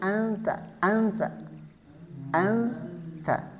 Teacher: Huruf nunnya lebih ketara daripada dengungnya. Makanya kita sering mendengar orang Arab ketika nyebut anta itu seperti anta, seperti n betul-betul n tanpa ada dengung. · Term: ikhfa aqrab